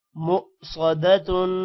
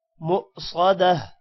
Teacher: پیشتن مؤصدتن آگے وقف یہاں پر بھی وقف کرنا ہے تو تا ہا میں کنورٹ ہو جائے گا اور اوپر جو تنوین ہے وہ ختم ہو جائے گی